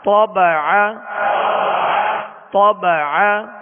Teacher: طا کو پر پڑھیں گے اور عین کو درمیان حلق سے ادا کریں گے